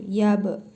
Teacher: Bə hərfinin üzərində cəzm var. Qalqalə hərfidir. Vurğulu tələffüz olunur.